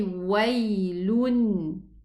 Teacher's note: there is a tanween here, which is pronounced a noon sukoon